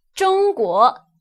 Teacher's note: that's really how the first tone should sound like high pitched